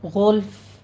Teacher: غلف میں غین پر پڑھنا ہے اور فا کو ہم ساکن کر دیں گے، یعنی وقف حذف کرنا ہے تو یہاں پہ ہمس ہو جائے گا.